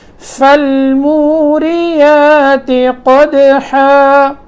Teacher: قدحا قاف موٹا ہے، دال میں قلقلہ، اور حا گلے کے درمیان میں سے نکلتا ہے